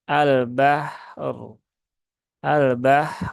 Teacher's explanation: Ra sukun berhubungan dengan ee huruf ba yang juga fathah berarti huruf ro berhubungan dengan fathah maka rnya dibaca dengan tafkhim ya atau dibaca dengan tebal